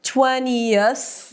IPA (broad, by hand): 'tweniəθ